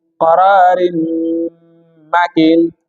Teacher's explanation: Ra imeshana kasratain, imekuja mim ambao ni herufi ya idgham, tunaifanyia ghuna kama kawaida